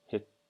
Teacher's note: this is a CH sound not a t because it has an i next to it